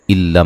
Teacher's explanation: नून साकिन का इदगाम बिला गुन्ना है, गुन्ना नहीं करेंगे।